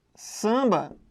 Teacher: o AM forma um som apenas, que é o som AN, é o A nasal